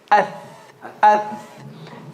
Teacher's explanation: Tip of the tongue is between the top and bottom teeth.